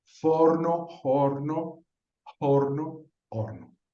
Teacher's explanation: esa F primero se aspiró en la época para el Castellano medieval sería una aspiración